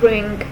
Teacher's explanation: We use ing in words like ring. It is a velar nasal sound. It is also produced when tongue comes in contact with velum.